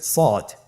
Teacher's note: সদ হরফটি পুর হরফ, মোটা হরফ, উচ্চারণের ক্ষেত্রে মোটা করে পড়তে হবে